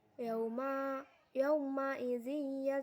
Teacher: Idgham Bighunnah huruf z berharakat kasrah tanwin bertemu dengan huruf ya dibaca masuk dengan dengung dan ditahan tiga harokat